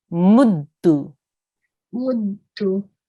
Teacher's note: We need to make sure you join the meme to the dal.